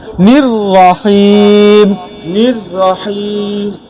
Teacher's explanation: নির্রহিম গোল হবে না, ঠোঁট গোল হবে না।